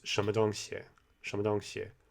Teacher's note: It shouldn't be a really high tone. It shouldn't be a really clear first tone, but the vowel sound still needs to be right.